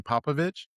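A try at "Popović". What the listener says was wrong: Popovich. With a CH at the end.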